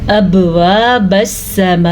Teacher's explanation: ابواب السماء، اب میں نے آپ کو بتایا نا حروف قلقلہ میں قاف، طا، با، جیم، دال یہ بھی شامل ہے تو ہم نے با پہ جھٹکا دیا ہے جسے قلقلہ کہتے ہیں